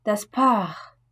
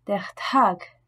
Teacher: En début de mot, ces consonnes ne se prononcent pas comme le P de patate, le T de tomate ou le K de kilo, mais sont accompagnées d'un léger H aspiré, que l'on doit bien percevoir.